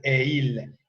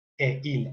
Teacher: Esta palabra e, que termina con T, nunca permite la ligadura. No es posible pronunciar esa T en ningún contexto. No es posible decir et-il, es un disparate, no existe. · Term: la liaison interdite